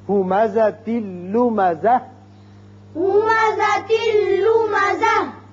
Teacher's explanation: جب بھی یہ تا گول ہتائیہ جسے کہتے ہیں یہ اس پر وقت کرنا ہو تو وقت کی صورت میں یہ ہا بن جاتا ہے، ملانے کی صورت میں تا رہتا ہے.